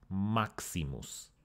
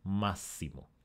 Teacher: Here we have maximus, greatest in Latin. We have a K and an S, but the final S influenced the K and made it another S, massimo, greatest. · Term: contact assimilation